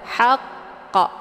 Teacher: di akhir kalimat yaitu huruf qf ini dinamakan dengan Qalqalah kubra cara bacanya huruf qnya dipantulkan dengan pantulan kuat haqq namun karena di sini terdapat tasdid maka cara bacanya disempurnakan · huruf qafnya dipantulkan dengan pantulan kuat